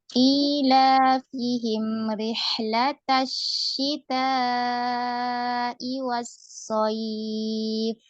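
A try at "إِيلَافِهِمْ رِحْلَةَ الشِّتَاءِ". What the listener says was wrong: Nah, kemudian mimnya itu dialirkan juga ukti. Dikit lagi alirannya ya. Jangan cuma ilafihim rih. Jadi disempurnakan, dialirkan dulu. Ilafihim rihlatasyita fihim rihlatasyita. Jadi karena dia ada gunnah ya, ada gunnah dia agak panjang. Jadi dialirkan ya. Fihim ya, sampai kerasa gunnahnya ya, sampai kerasa.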